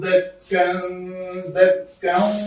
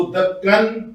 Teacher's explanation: دو زبر والی تنوین کے اوپر ہم نے رکنا تھا تو اس کو الف مدہ بنا کر رکھا، اس کو دکن وجا غلط ہوگا۔